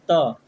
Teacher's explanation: तो जीभ जो है दांत से सट जाता है, यानी कि उससे स्पर्श करता है।